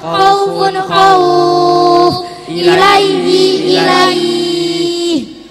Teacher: patah diikuti waw atau ya sukun bertemu huruf hidup dibaca waqaf, panjangnya 3 alif atau 6 harokat